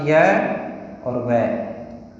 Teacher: य और व एकदम स्वरों के नजदीक हैं उच्चारण की दृष्टि से, इसलिए इन 2 वर्णों को अर्ध स्वर भी कहा जाता है।